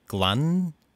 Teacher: glan, with the extended or lengthened N sound